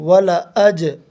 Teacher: جیم ساکن ہے، جیم ساکن کو الف کے زبر سے ملا کر پڑھیں گے اور اس میں حرف قلقلہ ہو، اس کو حرف قلقلہ کہتے ہیں۔ جیم کو ادا کرتے وقت جیم کے مخرج پر زبان لگ کر اچھٹ جائے گی